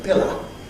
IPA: ˈpɪlə